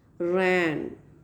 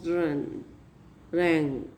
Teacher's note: Complete closure is there, and nasal passage is open to pass the lung air.